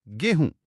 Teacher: गोधूम में जो ध था, वो बोलते बोलते ह बन गया, और जो म की ध्वनि थी, वो नाक से होते हुए चंद्र बिंदु में बदल गई। गोधूम से गोहूम और फिर बन गया गेहूं।